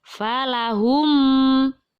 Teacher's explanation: mim sukun yang bertemu dengan alif dinamakan bacaan idhar syafawi maka membacanya harus dengan jelas